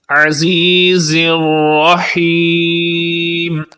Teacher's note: زبان کو اٹھا کر دونوں دانتوں کے اندرونی کنارے کے درمیان لگائیں گے تو زا کا مخرج صحیح طور پر ادا ہوگا، اور الرحیم کی را کو پر یعنی موٹا پڑھیں گے تھک ساؤنڈ میں، اور ہا کو صحیح پڑھیں گے، الرحیم نہیں بنائیں گے بلکہ الرحیم، اور آخر پہ مد عارض کی وجہ سے لمبا کریں گے۔ · عزیز دونوں زا ہیں، زا اور ذال میں فرق ہوتا ہے، زا کی آواز سخت ہوتی ہے اور ذال کی آواز نرم ہوتی ہے۔ یہاں پر زا ہے تو یہ سخت آواز کے ساتھ ادا ہوگا۔